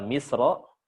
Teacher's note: Tapi disitulah para ulama berbeda pendapat. Tapi Imam Al-Jazari memilih kata misro ini ketika waqaf dibaca tebal roknya.